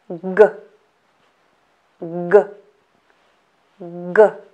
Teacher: the back part of the tongue is raised towards the back roof of the mouth the tip of tongue doesn't touch the lower teeth the air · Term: hard variant of letter G